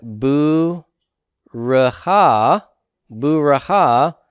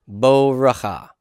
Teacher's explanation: Resh rejects its dagesh. And it causes compensatory lengthening.